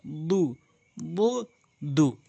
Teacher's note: এটি হচ্ছে দালটা জিহ্বার আগা, সামনে দুই দাঁতের গোড়া